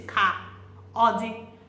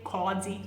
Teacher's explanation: So this is ka, odi, but when you're speaking, okay, you say kodi, so you join it together.